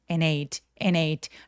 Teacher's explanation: 접속사 and는 워낙에 너무나 많이 쓰는 표현이라서 열심히 다 발음하지 않고요. 그냥 이 n 소리만 많이 내기 때문에 and ate 라고 D 소리는 없이 연음하셔도 괜찮겠습니다